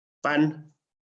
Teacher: Pan es una N alveolar, no es una N velar.